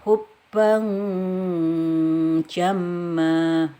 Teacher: Nah ini hubban jamma, ini ada tanwin ketemu jim, ini berarti ikhfa, maka dibaca samar-samar ya, tidak dibaca jelas tanwinnya, samar-samarnya kira-kira 2 harokat